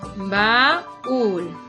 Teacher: van juntas, pero tiene un acento la vocal cerrada, la U. ¿Esto qué quiere decir? Que la U se convierte en una vocal fuerte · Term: hiato